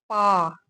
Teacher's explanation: आपके दोनों होठ एक दूसरे के समीप आ रहे हैं और एक दूसरे से स्पर्श कर रहे हैं। तब हमारा मुख खुल रहा है और प ध्वनि निकल रही है।